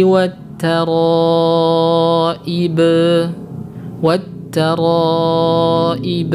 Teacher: Perhatikan, qalqalah pada huruf ba dipanjangkan